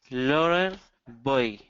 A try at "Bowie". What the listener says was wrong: So get the bow.